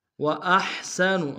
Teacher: حمزہ کو ہا کے سامنے لیں گے، گہرائی سے ادا کریں گے، سین اور نون کو لم سے ادا کریں گے۔